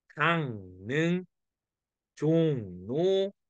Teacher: 니은으로 바뀌어서 강릉, 종로 이렇게 발음하는 거죠. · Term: 리을의 비음화